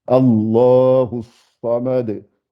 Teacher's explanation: il ne faut plus passer sans faire le qalqala pour le dal